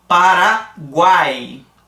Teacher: formando o tritongo e eles não vão ter a obstrução nasal · Não senti nada no meu nariz para pronunciar esse guai. Saiu com certa liberdade pela minha boca. Tá? Então a gente tem aqui mesma coisa, semivogal, o U aqui, ó, semivogal, o A vogal e o I semivogal novamente. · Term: tritongo oral